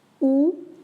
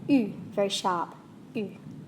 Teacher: Oo, very open, sounds like an owl, oo, and u, very sharp, u.